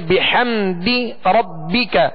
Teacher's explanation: بحمدی، ہا تو وسط حلق سے ادا کریں گے. بحمدی ربک، بحمدی دال کو کھینچیں گے نہیں، دال کے نیچے زیر ہے لہذا آواز کو گرا کر ادا کریں گے